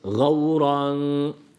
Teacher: ra harfi de kalındır a sesi verdik e değil